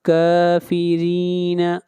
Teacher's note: آخری آیت، فَمَهِّلِ، میم کو ملائیں گے ہا کے ساتھ، فَمَهِّلِ الْكَافِرِينَ، کاف کو کھینچ کر پڑھیں گے 1 الف کے برابر، کافرین، را کو باریک پڑھیں گے، را کے نیچے زیر ہے